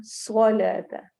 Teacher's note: स्वाद सीटी वाले हरूफ में से भी है और मोटा भी है , हरूफ मुस्तालिया में से भी है। वआतुज़्ज़कात, वआतुज़, ज़ सीटी